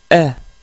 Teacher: Avec la fatha, on prononce un E et non pas A. Attention, donc c'est un A léger, E.